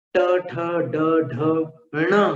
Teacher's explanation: ण में आपको मूर्धा और नासिका दोनों को मिलाना पड़ता है।